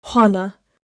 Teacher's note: Hana, a breath then a nose sound.